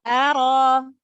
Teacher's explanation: Ro di sini berharokat fathah, maka dibaca tebal